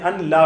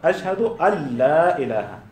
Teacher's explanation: بات واضح ہے کہ نون ساکن یا تنوین کے بعد را یا لام آ جائے تو اسی کو کہتے ہیں ادغام کامل یا ادغام بلا غنہ، اس میں غنہ نہیں ہوتا یا مکمل اس کو مدغم کر دیا جاتا ہے